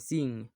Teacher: the sound N in sing doesn't have G sound at the end. It stops at the back of your mouth.